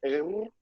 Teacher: You got to kind of roll that R